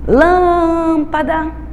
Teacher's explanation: o pedaço lã é o pedaço que mais demora. Então, a sílaba tônica é o pedacinho lã.